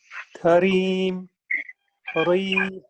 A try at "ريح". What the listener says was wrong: No, not ري. ريح. No, ريح. Very good.